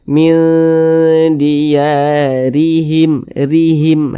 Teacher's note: Baris 1 ke bawah ini namanya tanda baca kasroh atau harokat kasroh. Huruf roh yang memiliki tanda baca kasroh maka dia dibaca tipis, dibaca tarkik, dibaca tipis. Sehingga pangkalisan kita itu tidak naik terangkat ke atas.